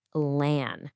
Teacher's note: The first chunk sounds like lan and you really want to lean into a nice open ah sound there. Then, you just finish it right off with a super soft she.